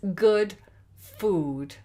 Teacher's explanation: It's /gud fu:d/, so that's two different vowel sounds.